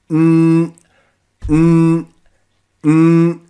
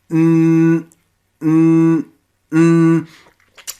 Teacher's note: It's a nasal sound. That means the sound is made through the nose.